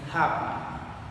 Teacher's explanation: For example, the consonant pa according to the place of articulation is bilabial and according to the manner of articulation is stop. According to the voice, articulation is voiceless.